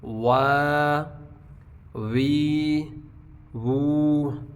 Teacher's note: واو یہ شروع میں ہونٹ گول ہوں گے، اور درمیان میں ہونٹ کھلیں گے اور آخر پہ پھر کھولیں گے.